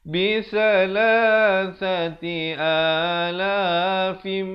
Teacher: Idgham bi gunnah di sini, tanwin bertemu mim, dengungkan 2 harakat.